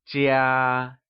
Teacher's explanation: it is pronounced using the high level tone